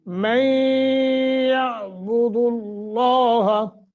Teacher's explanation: مَن يَعْبُدُ اللَّهَ، ادغام مع الغنہ، لفظ اللہ کو تفخیم کے ساتھ منہ بھر کے پڑھیں گے